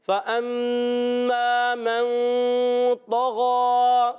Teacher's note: تو پر زبر ہے، نہیں کھینچنا، اور غین پر کھڑا زبر، اس کو ایک الف کھینچنا ہے۔ تو موٹے حروف میں سے ہے، اور تو حروف مستعلیہ میں بھی ہے، غین بھی حروف مستعلیہ میں، مگر تو ایکسٹرا موٹے حروف، حروف مطبقہ، ان کو کہتے ہیں حروف مطبقہ، ایکسٹرا موٹے حروف بھی کہتے ہیں، ان میں سے تو ہے۔